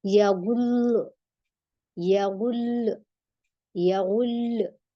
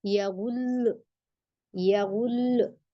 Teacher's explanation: लाम को 2 बार जाहिर करना और थोड़ा सा आवाज ऊंची करना बस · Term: नब्र